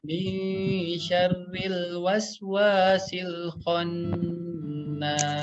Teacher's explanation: Ingat ya, ifanya harus disamarkan 2 harokat dan nun yang bertasdidnya harus didengungkan 2 harokat